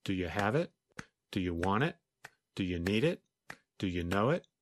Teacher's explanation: when you read the list quickly it had an even beat almost like music